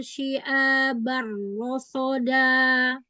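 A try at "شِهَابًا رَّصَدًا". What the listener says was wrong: Ha besar. Syihaba. Ha besar.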